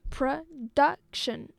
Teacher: a 3-syllable word. The stress is on the second one.